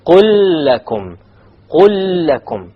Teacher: There's a silent lam followed by a lam with a fatha on it. Therefore, there will be a full idgham here.